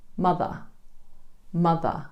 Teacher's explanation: In British English, we use the Schwa at the end of words as well, particularly words that end in ER. In mother, for example, we don't pronounce the R at the end. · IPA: /ə/